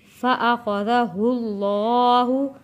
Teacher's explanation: یہاں پہ اللہ کا لام موٹا پڑھیں گے کیونکہ اللہ کے لام سے پہلے پیش آ رہا ہے